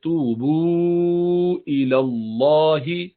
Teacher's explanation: توبو، یہ بھی دونوں مدی ہیں، واو سے پہلے پیش ہے دونوں جگہوں پر. اور آگے چونکہ حمزہ آ رہا ہے اس لیے بو کو ذرا لمبا کھینچا